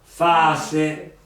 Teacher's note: La caduta della L, quindi la A È più lunga. si allunga e in questo caso però ci mettiamo, siccome è dentro la parola, ci mettiamo i due punti.